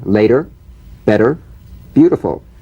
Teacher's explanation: The medial T becomes a soft D.